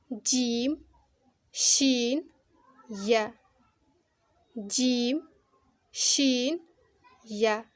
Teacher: ज़बान के बीच का जो हिस्सा है उसके बराबर के तालु से मिले।